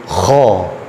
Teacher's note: Maka naikkan mulut, kho, tebal, naik suaranya. Itu disebut dengan isti'la.